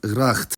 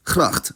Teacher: the voiceless velar fricative [x] and its voiced counterpart [ɣ] in Belgium, and just the voiceless uvular fricative [χ] in the Netherlands